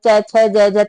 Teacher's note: च छ ज ज तालव्य से बोले जाते हैं